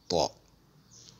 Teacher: Elle se prononce lorsque l'apex s'appuie contre la muqueuse palatine en faisant un creux au milieu de la langue. C'est une lettre emphatique to.